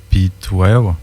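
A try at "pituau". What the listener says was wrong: Pituao. C'est pas wow, il y a un A là. Pituao.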